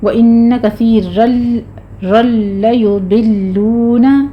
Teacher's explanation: غنہ ہے یہاں پہ، اور آگے ضاد کو پر پڑھیں گے، لام پہ آپ نے صرف تشدید ادا کرنی ہے، لام کو موٹا نہیں کرنا · را مفخم ہے، تنوین کا قاعدہ ادغام بلا غنہ ہے یہاں پہ، اور آگے ضاد کو پر پڑھیں گے، لام پہ